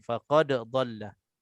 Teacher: Jadi macam dha di sini dengan da nipis, dha tu tebal, dan tempat keluarnya sama tapi sifatnya terus berlainan.